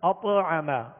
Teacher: قلقلہ، یہ حروف قلقلہ میں سے، لہذا یہاں پر اطعم، اطعم نہیں پڑھیں گے بلکہ اطعم، آواز لوٹتی آئے گی، آواز میں جنبش پیدا ہوگی